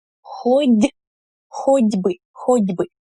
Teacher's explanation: the t here also becomes voiced when it precedes b